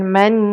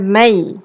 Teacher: Kita masukkan bunyi nun mati ke dalam ya. Jadi man yasha'.